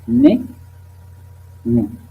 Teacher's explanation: On utilise les pointes de la langue avec les incisives supérieures. Ce sont sonores